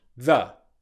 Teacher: The is a weak, unstressed the. It's the th sound, voiced, followed by the schwa sound